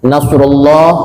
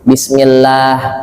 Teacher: Nasrullah, lafaz Allah di sini tafkhim, tebal, mulut agak monyong, suara kedengaran seperti oh Allah